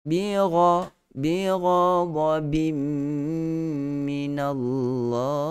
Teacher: Bim, tanwin bertemu dengan mim adalah idgham al-ghunnah, jenis bahagian yang kamilan. Masukkan bunyi tanwin itu totally ke dalam huruf mim.